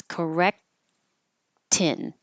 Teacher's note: the tongue goes to the K position but you don't release the K